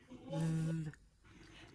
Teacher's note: This is a voiced consonant. It's pronounced th. Now, did you notice how my tongue sticks out?